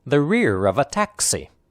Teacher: The emphasized words are rear and taxi. The other words are unstressed, spoken lightly and quickly. The 3 words rear of a are linked together.